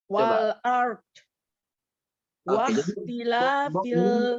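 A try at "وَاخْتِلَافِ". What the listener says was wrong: Dia kayak mendorong gitu Bu. Coba diulang lagi.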